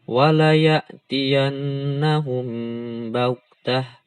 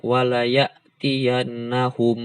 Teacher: Nah, enggak dijelaskan mimnya, tapi disamar-samarkan.